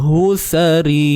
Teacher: Ri nipis sebab baris bawah. Dan panjangkan 2 harakat ni ada ya mad.